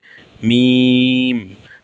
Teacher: আর দুই ঠোটের শুকনা অংশ থেকে উচ্চারণ হবে মিম। দুই ঠোটের শুকনা অংশ থেকে মিম